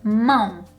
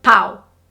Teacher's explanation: The next one is the pronunciation of um which a lot of non-native speakers of Portuguese pronounce it as au. Again, that nasal sound that has to come from the nose in order to make that um sound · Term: nasal pronunciation of um